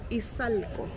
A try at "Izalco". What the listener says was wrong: Izalco. Izalco. Izalco. Oh, ease. Like Izalco.